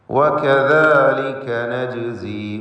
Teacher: ജീമിൻ്റെ സുക്കൂനിനെ ഖൽഖല സുഗ്റ നൽകി ശബ്ദം ഹറക്കത്ത് പോലെ ചലിപ്പിക്കണം.